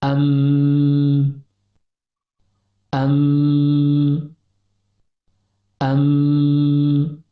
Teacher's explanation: suara dengung yang keluar melalui al-khaisyum atau rongga hidung